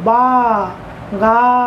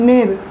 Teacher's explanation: দুটো দল উচ্চারণের সময় আমরা টেনে উচ্চারণ করতে পারছি, আমাদের বাকযন্ত্র খোলা থাকছে, শেষে আমরা স্বরধ্বনি পাচ্ছি, যে কারণে দুটোই হচ্ছে মুক্ত দল, তাই দুটো দলের মাথায় মুক্ত দলের চিহ্ন বসিয়েছি।